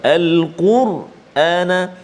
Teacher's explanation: Yang kedua, kita bertemu kalimah al-Quran, ra sukun ataupun ra mati sebelum dia huruf qaf baris depan, maka bunyi dia tebal.